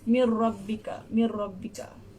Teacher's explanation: Mir dia huruf nun ni dia macam pecah tapi dia masuk ke huruf ra.